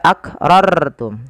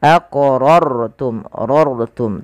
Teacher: Artinya rnya dibaca dengan tebal tidak dibaca akrartum tapi dia aqrortum rortum.